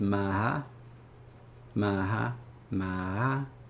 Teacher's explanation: If we say that the H becomes some sort of a voiced thing, where it's like we just say H voices in between A, but we don't actually write it